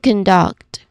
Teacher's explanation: The stress falls on the second syllable duct